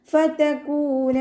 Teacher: ഫതകൂന, ഫ ലൈറ്റ് ആക്കിയിട്ട് ഉച്ചരിക്കാൻ ശ്രദ്ധിക്കുക. നമ്മുടെ മേലെ മുൻപല്ലിൻ്റെ അറ്റം താഴെ ചുണ്ടിൻ്റെ ഉൾവശത്ത് നനഞ്ഞ ഭാഗത്ത് വെച്ചിട്ട് ഉച്ചരിക്കാൻ കേട്ടോ.